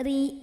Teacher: maka bacanya tipis saja ringan tanpa harus mengangkat pangkal lidah kita